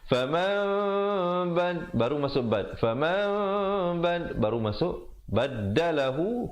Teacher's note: di situ hukum iqlab, nun mati bertemu ba